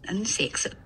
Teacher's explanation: So in New Zealand, the I becomes more centralized, so it's maybe something like I, or maybe this vowel. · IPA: ɪ